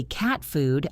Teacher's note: Or think about the word cat. If I say cat food, I don't say cat with a strong t. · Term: stop T